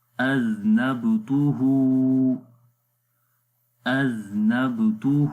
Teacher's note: کو نرم پڑھیں گے، نون کو با کے ساتھ ملائیں گے، قلقلہ کی آواز آئے گی، کمزور قلقلہ ہوگا، سختی کے ساتھ قلقلہ نہیں ہوگا